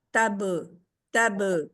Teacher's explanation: سختی کے ساتھ ہٹ کریں گے با کے اوپر اور پھر رکیں گے، اس کو جزم لگا کے قلقلہ کرتے ہوئے۔